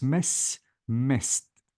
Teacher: I have to delete or replace the D with T, and I have to delete the E sound.